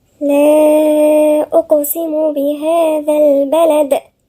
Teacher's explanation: في هنا مد منفصل 4 حركات